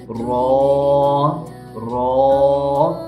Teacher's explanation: ये रॉ का भी यही मखरज है कि ज़ुबान के किनारे की पुश जब ऊपर वाले 3 दांतों के मसूड़ों से लगे तो इससे रॉ अदा होता है